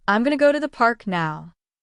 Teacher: The words going to often become gonna in natural speech. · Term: connected speech